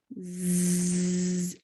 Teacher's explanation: you feel the vibration so that means the z sound is voiced